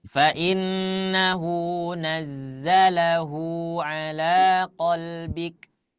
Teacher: Ini hu-nya panjang karena ada dhamma terbalik.